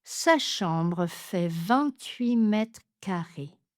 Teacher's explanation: Ici, on ne va pas prononcer le T à la fin de 8.